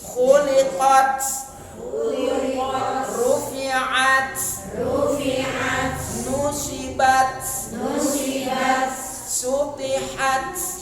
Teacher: waqafnya dengan menghamaskan huruf ta, mensukunkan huruf ta, dibaca hamas.